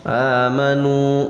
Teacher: Amanu, nunya mad tabi'i, waw sukun sesudah dhamma panjangnya 2 harokat